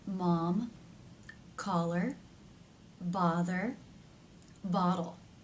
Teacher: notice that the tongue has pressed down and is flatter. I feel this especially towards the back. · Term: ah as in father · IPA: /ɑ/